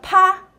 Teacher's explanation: when you want to do a paw you actually have to intentionally aspirate that puff of air